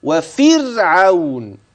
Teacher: الرا ترقق قولا واحده اياك ان تفخم هذه الراء